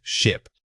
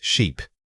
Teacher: The mechanical change you need to notice is how much jaw movement accompanies the vowel. For ship, the jaw movements are minimal and contained. For sheep, the stretch requires a more pronounced opening of the mouth.